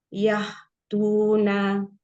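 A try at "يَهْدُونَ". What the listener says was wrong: Huruf dalnya kurang maju dikit lidahnya, Mi. Ke depan ya, ke belakang, benar-benar belakang lidah. Belakang gigi seri. Yahdudu.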